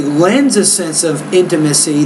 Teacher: we don't really pause after the word lens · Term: blending